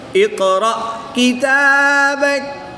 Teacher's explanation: قاف حروف مستعلیہ میں سے بھی ہے اور حروف قلقلہ میں سے بھی ہے، اس کو پور بھی پڑھیں گے اور اس میں قلقلہ خوب ظاہر بھی کریں گے